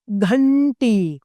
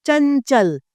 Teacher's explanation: अनुस्वार इसका उच्चारण नाक यानी नासिका से किया जाता है।